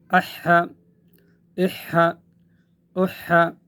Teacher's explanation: گلے کے درمیان سے ادا کرنا ہے تو ایک قسم کی ہوا کی آواز آئے گی۔